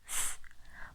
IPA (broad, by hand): θ